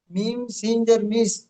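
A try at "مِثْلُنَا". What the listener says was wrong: সিন নেই এখানে সা আছে ফা মিম সা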